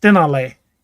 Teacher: it's stenale with kind of the emphasis on the middle syllable